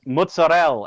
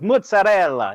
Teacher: our diaspora drop the last vowel on all of the Italian words